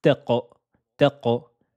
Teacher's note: La lettre Qaf, attention, elle est emphatique et aussi qalqala.